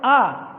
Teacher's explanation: उसके बाद बारी आती है उ, ओ, औ और आ। तो आ का उच्चारण हम करते तो मुख गुहा पूरी खुल जाती है। कैसी खुल जाती है, मुख गुहा पूरी खुल जाती है, ठीक है।